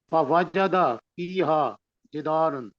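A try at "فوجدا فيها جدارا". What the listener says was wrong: نہیں، یہاں دوبارہ آ گیا نا. فوجدا، غلطی یہ ہو رہی ہے کہ فواجدہ کہیں گے تو مطلب بن جائے گا اس ایک اکیلے نے پایا، اور اگر پڑھیں گے فواجدہ، جی تو وہ الف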